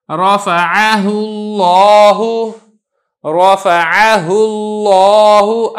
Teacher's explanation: لفظ اللہ کو میں موٹا کر کے ادا کر رہا ہوں، کیوں؟ کیونکہ اس سے پہلے پیش آ چکی ہے